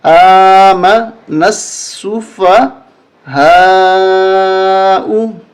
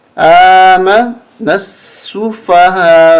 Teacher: یہاں پر ہم وقف کریں گے، یہ پیش ختم ہو جائے گی